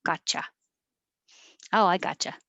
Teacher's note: the t and the y together change to a cha